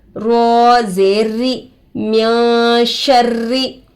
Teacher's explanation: रो पर तशदीद आकर है, दो मरतबा पढ़ेंगे. एक पिछले वाले हरफ से, एक खुद से. रो पर तशदीद आकर है, रोए मुशद्ददा होगा.